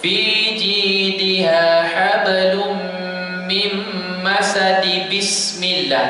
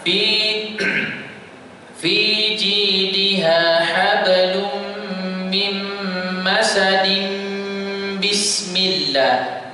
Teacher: Sebab mim akan bertemu dengan basmalah. Sebab tu kena dengung.